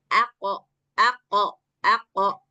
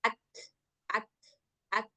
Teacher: Dia punya sifat qalqalah yang mana ketika qof sukun dia wajib diqqalqalahkan. Suaranya harus dipantulkan.